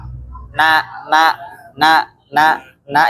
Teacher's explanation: Jadi ujung lidah, depan lidah bertemu dengan gusi atas. Ya, gusi gigi seri depan.